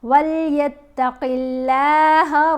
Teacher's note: اب قاف کے نیچے زیر آ گئی، قاف کو تو موٹا پڑھیں گے لیکن اللہ کی لام کو موٹا نہیں پڑھیں گے